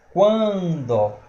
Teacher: vai subindo o som. Vai ser um ditongo nasal crescente.